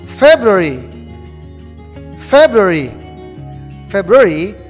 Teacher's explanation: The stress is in the first syllable, like January